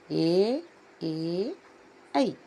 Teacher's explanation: ಕಂಠ ತಾಲು ಅಂದ್ರೆ ಕಂಠ ಮತ್ತು ದವಡೆಯಿಂದ ಉಚ್ಚಾರವಾಗುವಂತಹ ಅಕ್ಷರಗಳು